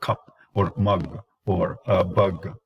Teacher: So that is the sound, and it is lax. So it is mid, central, lax, unrounded. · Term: wedge sound